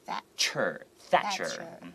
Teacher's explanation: TH, don't forget, your tongue has to go between the two teeth in the front and go Thatcher.